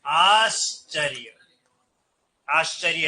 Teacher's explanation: विसर्ग के बाद अगर तालव्य ध्वनियां च, छ, श इनमें से कोई भी आ जाए तो यह जो विसर्ग है किस में बदल जाता है? श में।